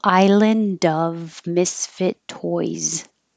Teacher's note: And the toys has a Z. Island of. Plural, the S sounds like a Z.